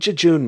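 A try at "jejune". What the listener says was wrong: Actually, I think you're not fully pronouncing the word. It's not Jejun, like really quickly. It is June.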